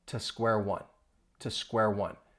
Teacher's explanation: it's going to sound like a much softer, weaker to